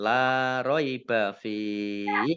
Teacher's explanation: Kasroh tanwin bertemu dengan huruf lam, bacaan idgham bila gunnah, masuk dengan tidak mendengung, langsung masuk ke huruf lam tetapi tidak mendengung, ditandai dengan lamnya ada tasdidnya.